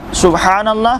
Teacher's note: बा के बाद हा है सुबहानल्लाह, हा वही है जो दरमियाने हलक से अदा होगा